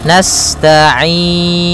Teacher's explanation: sifat sinnya sempurnakan dengan mengalirkan nafasnya